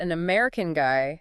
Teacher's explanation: You've got an American guy, stress on American, maybe pointing him out